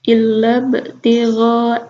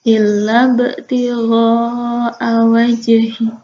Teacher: itu ada ba mati ya, jadi dibacanya dipantulkan